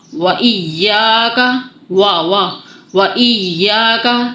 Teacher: واو ہونٹوں کی گلائی سے ادا ہوگا. واو آپ کو آواز آ رہی ہوگی، محسوس ہو رہا ہوگا پورا ہونٹوں کا منہ کا زاویہ گول ہوگا.